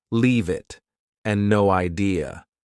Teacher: Both sound like they have no spaces between the words.